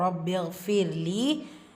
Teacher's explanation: ரா சுக்கூனுக்கு முன்னாடி கெஸ்ரா வந்திருக்கு. ஸோ இந்த இடத்துல நீங்கள் மெல்லினமாக ஓதுனா போதும். லீலையா மத்தா 2 ஹரக்கத்தளவு நீட்டம் கொடுக்கணும்.